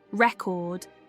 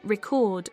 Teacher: the noun record places stress on the first syllable, while the verb record stresses the second, altering its meaning.